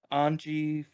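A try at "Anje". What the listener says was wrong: Anya. It's Anya. It's a soft J.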